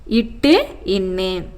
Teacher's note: நாவின் நுனி அண்ணத்தின் நுனியை பொருந்துவதால் பிறக்கும் மெய்ெழுத்துக்கள்